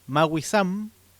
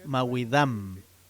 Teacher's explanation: la S es muy común también en muchas palabras, pero también esa pronunciación puede tener lo que se le dice alófono, un sonido que lo reemplaza, que puede ser la D